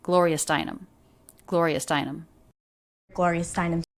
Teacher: the stressed syllable of her last name would be the most stressed in the group of her name